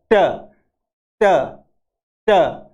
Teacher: Alveolar यानी दांतों से जस्ट ऊपर का भाग जो होता है मसूड़ों का, उसको कहते हैं एल्वियोलर। तो हमारी जो जुबान है वो एल्वियोलर के ऊपर जा करके और लगती है और हम बोलते हैं ट ट ट ट का आवाज बोलते हैं, ट की ध्वनि बोलते हैं।